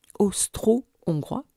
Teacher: le mot austro-hongrois utilise les graphies O et AU pour le même timbre mi fermé O